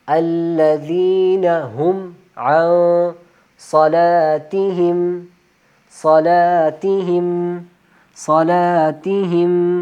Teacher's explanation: صلا صلا صلاتہم تہم ہا، الذین ہم عن یہاں پہ غنہ ہوگا تو اس وجہ سے عن آواز کو ناک میں چھپانا ہے